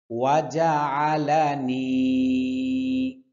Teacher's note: আইনের উচ্চারণ কণ্ঠনালীর মধ্যখান থেকে উচ্চারণ হবে